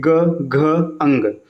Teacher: है सघोष होते जैसे आप बोल के देखिए ग घ अंग आप बोलेंगे ना तो आपके गले में कंपन आएगी · अब देखिए वर्ग का पहला दूसरा यहाँ पे आ चुका है, तो तीसरा चौथा और पांचवा वर्ग के जो तीन अक्षर हैं ये आपके क्या होते हैं, सघोष होते हैं। जैसे आप बोल के देखिए ग घ अंग, आप बोलेंगे ना तो आपके गले में कंपन आएगी। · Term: सघोष व्यंजन